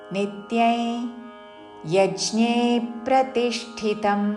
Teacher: అనుస్వారము నాసిక య ఉచ్చారణ